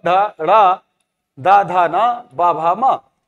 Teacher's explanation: इनके उच्चारण में स्वर तंत्रिकाओं में कंपन होता है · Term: सघोष